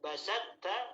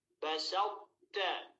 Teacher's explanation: menyisakan sifat huruf to, ketebalan huruf to ketika kita ingin memasukkan huruf to tersebut ke huruf ta. Yang asalnya basatta menjadi basawta. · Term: idgham naqis